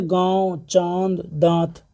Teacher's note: नाक से कम मुख से ज़्यादा वायु निकलती है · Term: चंद्रबिंदु